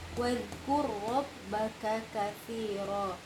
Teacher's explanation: Wajib kita izharkan. Kafnya harus jelas ya, ka dan ka.